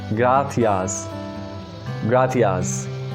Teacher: In Latin America, this soft C is pronounced as S as of English.